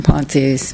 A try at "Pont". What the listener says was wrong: Pont. The E is silent.